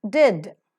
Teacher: teeth Ridge is involved in the production of the sound and plursive because the air is held up in the oral cavity and is released with explosive sound